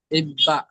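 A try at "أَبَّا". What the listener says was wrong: ইব হয়ে যাচ্ছে, আব হবে, আব্বা। হামজা বা জাবার আব। বা জাবার বা।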